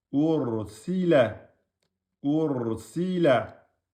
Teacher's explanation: Le ra soukoun précédé d'une damma ou bien d'une fatha, il est emphatique. Donc, vous dites pas ur.